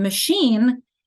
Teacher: we still have the sh sound instead of ch